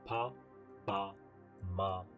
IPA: pa, ba, ma